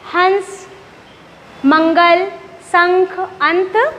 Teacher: जब हम अनुस्वार का उच्चारण करते हैं तो हवा कहाँ से निकलती है? नासिका अर्थात हमारे नाक से।